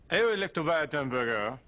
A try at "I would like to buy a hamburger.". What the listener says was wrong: It's not damburger, hamburger. I would like to buy a hamburger.